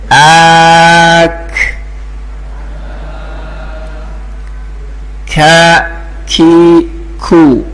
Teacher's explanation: yaitu aqsal lisan bertemu dengan langit-langit yang ada di tengah lisan. Keluar huruf kaf ak ya. Tempelkan ya agak maju sedikit dari ya tempatnya QF.